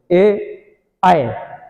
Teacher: इनके उच्चारण में हवा कंठ को भी छू रही है और ताल को भी छू रही है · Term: कंठ तालब